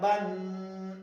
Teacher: ایک الف کے مقدار اس کے اندر ناک کے اندر آواز لے کی جانی ہے. جیسے میں نے آپ کو بتایا کہ یہ نون ساکن ہے اور نون ساکن کے اندر آواز ناک کے اندر چلی جاتی ہے. · جب آپ ناک کے بانسے میں آواز لے کے جاتے ہیں اور وہ آواز گنگناتی ہوئی، ایسے جیسے وائبریشن کی طرح گنگناتی ہوئی آواز ناک کے اندر جائے گی تو اس کو غنہ کہا جائے گا.